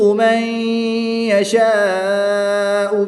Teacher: نون ساکن کے بعد یا حرف یعملون میں سے ہے تو یہاں پر ادغام مع الغنہ ہوگا، غنہ کر کے پڑھیں گے · الف مدہ کے بعد حمزہ اسی کلمے میں ہے تو یہاں پر مد متصل ہوگی، 3 سے 5 الف تک کھینچ کر پڑھیں گے